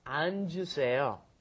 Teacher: you've got to go 안, and then the J sound comes up